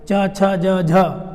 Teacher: चा वर्ग का उच्चारण स्थान होता है तालु। तो इनका उच्चारण स्थान बोलते समय क्या होता है, तालु हमारी टच होती है, वो लगती है, यूज में आती है।